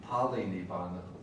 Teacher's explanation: in King Ashoka's Magadhi, often we don't have the R, but the L occurs where one would expect an R in Pali